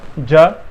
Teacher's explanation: ज़ुबान होती है वो तालू के आगे वाले हिस्से में जब हम टच करते हैं तो उसमें जा निकलता है